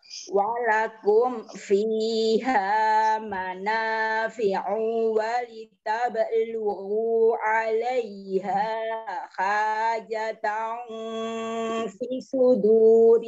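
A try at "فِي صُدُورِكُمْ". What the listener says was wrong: Fi sudurikum, fi-nya panjang.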